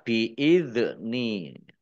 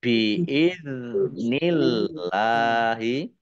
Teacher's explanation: Dal sukun bukan qolqolah jangan dipantulkan jangan jangan dibaca biid ni tapi dibaca biidnillahi Allahnya dibaca tipis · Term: bukan kolkolah